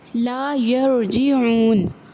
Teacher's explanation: یر را پر آ کے ہم نے منہ کو تھوڑا سا گول کرنا ہے تو خود بخود را کی جو ادائیگی ہے وہ پر ہوگی۔ لا یرجعون، لا یر نہیں پڑھنا، یر آپ نے منہ کی طرف بھی اپنے غور کرنا ہے، لا یرجعون۔